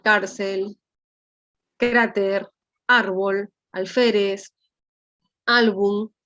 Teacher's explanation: Igual será en el aspecto de las palabras paroxítonas, o también conocidas como graves, se tildarán todas, excepto las que no terminan en NS o vocal, y su fuerza de voz está en la penúltima sílaba